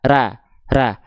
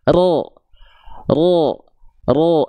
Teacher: Kalau pangkal lidah tidak diangkat, akan kembali ke basic fathah. Fathah itu basicnya A. · Perhatikan, ya, bukan ro, tapi buka mulut kita ra, ra. Keluarnya masih vokal A, tandanya pangkal lidah kita belum naik.